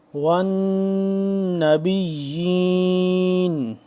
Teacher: یا کھڑا مد، یا کھڑا زیر یی. اب اس کو بھی ایک الف کے برابر اس کو لمبا کریں گے